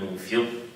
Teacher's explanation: your mouth is on the shape of the فاء while you give it بغنة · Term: إخفاء